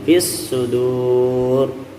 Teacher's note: Karena ini adalah huruf syamsiyah, maka alif lamnya dianggap tidak ada. · durnya mad arid disukun, roknya kita tebalkan